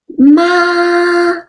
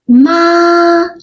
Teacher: So the first tone is ma. It's a high flat tone.